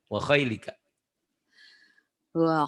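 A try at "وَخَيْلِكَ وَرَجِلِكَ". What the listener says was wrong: Kayaknya Ibu suka panjang tuh ya.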